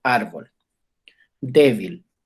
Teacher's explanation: Esas palabras se tildan porque son graves y la intensidad de la voz cae en la penúltima sílaba